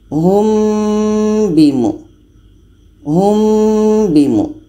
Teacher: Humbi humbi terbaca samar-samar. Saat kita mengucapkan huruf mim, kita sudah merasakan huruf ba. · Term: ikhfa syafawi